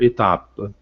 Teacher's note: é final em francês não se pronuncia, existe graficamente, mas não existe foneticamente. Então eu vou até a consoante final anterior.